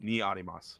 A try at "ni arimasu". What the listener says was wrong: Very good. Try it one more time.